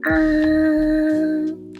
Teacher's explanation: The first tone is very high and flat. This is the only tone with no changes in pitch.